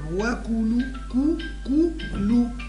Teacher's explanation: كذلك لا نقول وكلوا إنما نقول وكو رقق الكاف وضم أعطيها ضم محكم